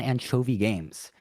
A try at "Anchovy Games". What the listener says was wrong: I've never heard anybody pronounce Anchovy Games like that. You accented the second syllable in anchovy. You said Anchovy Games instead of Anchovy Games.